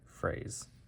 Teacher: this is written with an S, but you might pronounce it more of a Z. So, in this case, it wouldn't be phrase, it would be phrase.